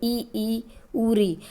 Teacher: वह स्वर जिनके उच्चारण में मुंह बंद सा रहता है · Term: संवर्त स्वर